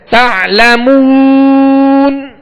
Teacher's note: مگر تعلمون یہاں وہ مدہ ہے، اور وہ مدہ کو جب ہم دراز کریں گے تو دونوں ہونٹوں کو کامل گول کریں گے ورنہ مجھول ہو جائے گا